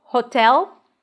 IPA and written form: hotɛl (hotel)